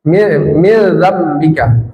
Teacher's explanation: Nun sukun bertemu zal, min dzambika apa? Ikhfa. Disamarkan lalu didengungkan. Tidak dibaca jelas min tapi min dzalika.